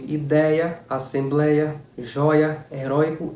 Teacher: é um ditongo onde uma das vogais uma das duas vogais vai ter o som aberto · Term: ditongo aberto